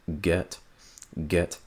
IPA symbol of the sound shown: ɛ